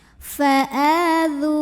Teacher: Sebab ada waw sukun yang didahului baris dhammah. Cara membacanya, dzal yang barisnya dhammah kita panjangkan 2 harokat. Mad-tabi'inya mad-tabi'i zahiri, tertulis waw sukunnya, kelihatan huruf madnya.